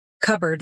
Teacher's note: elision eg cupboard losing the p sound